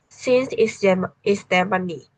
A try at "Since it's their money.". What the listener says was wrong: This part, since it's their money. Since it's their, you need to stretch it. Since it's their money.